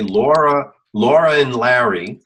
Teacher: the and wouldn't be pronounced as and, right? It's pronounced as just an N. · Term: connected speech